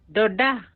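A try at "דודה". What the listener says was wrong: Beautiful.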